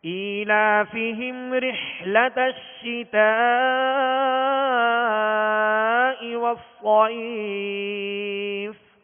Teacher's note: رحلہ رحلہ رحلہ نہیں رحلہ، ہا اور حا میں فرق. یہاں حا ہے جو حلق کے درمیان سے ادا ہوتی ہے.